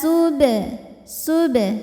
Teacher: maka cara bacanya ba dipantulkan dengan pantulan yang kecil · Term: Qalqalah Sugra